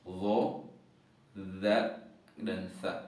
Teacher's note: Kemudian ujung lidah bertemu dengan ujung gigi seri atau ujung gigi depan yang bagian atas.